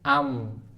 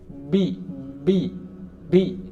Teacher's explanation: kita membaca mim sukun menutup akhirnya kita membaca Bi menutup awalnya